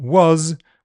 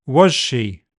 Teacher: the alveolar z in was will become palatoalveolar zh in was she, to join onto the following palatoalveolar sound